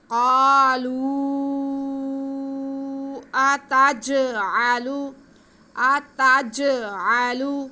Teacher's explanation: جیم حروف قلقلہ میں سے ہے تو اس کو ہم ہلا کے پڑھیں گے، جنبش دے کے پڑھیں گے